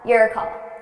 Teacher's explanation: So I'm taking or, that vowel sound, or, your, and I'm reducing it to your call.